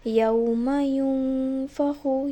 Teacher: میں نے اپنے منہ کی بناوٹ فا کی طرح کر دی تاکہ سننے والے کو لگے کہ میں نون کے فوراً بعد فا پڑھنے ہی جا رہی ہوں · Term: فا کا اخفا